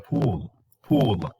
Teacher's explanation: it is high and it is back so the the farthest back and the highest